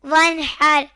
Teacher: یہاں نون ساکن کے بعد حار آئے تو اظہار ہوگا